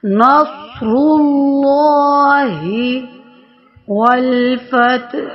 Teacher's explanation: آگے اللہ کے لام سے پہلے پیش آ رہا ہے، تو اس میں جلالت اللہ موٹا پڑا جائے گا